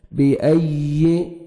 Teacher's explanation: سئلت وَإِذَا الْمَوْءُودَةُ سُئِلَتْ بِأَيِّ ذَنبٍ قُتِلَتْ، بِأَيِّ یا مشدد ہے، یا کو مرشد ہے، حمزہ کو یا کے ساتھ سختی سے ملائیں گے اور یا کا ساؤنڈ آئے گا۔